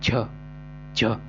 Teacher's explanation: पूरी प्रेशर के साथ हवा आती है